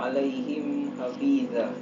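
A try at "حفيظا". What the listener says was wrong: Hafiza atau hafidha? Huruf apa itu? Itbaq. Masih ingat sifat huruf itbaq? Tebal dia.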